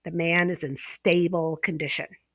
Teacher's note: the first syllable is stressed for the adjective stable